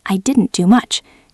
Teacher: And often the t at the end is very soft.